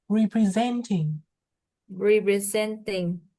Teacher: the stress of the word is on the third syllable